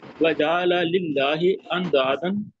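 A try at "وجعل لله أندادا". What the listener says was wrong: جیم کو تھوڑا چھوٹا رکھیں۔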